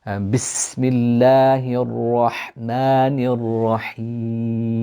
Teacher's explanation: burst of air when you pronounce the ha from the middle of the throat